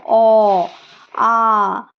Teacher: শ্বাস বায়ু তার গতিপথ থেকে কোন জায়গায় বাধা প্রাপ্ত হয় না বিনা বাধায় বেরিয়ে আসতে পারে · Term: স্বরধ্বনি